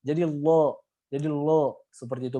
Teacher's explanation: Jadi lo seperti itu, bukan la lagi tapi lo, jadi tebal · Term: lam menjadi tebal